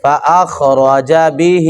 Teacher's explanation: خا کو بھی موٹا اور را کو بھی موٹا کریں گے جی